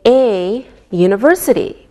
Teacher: We say a university because university sounds like a Y sound.